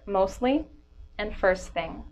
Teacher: I'm not pronouncing that T in between those words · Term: drop T